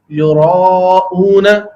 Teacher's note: عربی میں یہ را پر پڑھا جائے گا، موٹا پڑھا جائے گا۔ اگر اس کو یراؤون اردو کے انداز میں پڑھ دیا جائے گا تو یہ بھی لہن خفی کی غلطی بنے گی۔